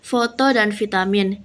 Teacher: Tempat artikulasi bibir bawah dan gigi atas. Keterangannya F tidak bersuara, V bersuara. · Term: labiodental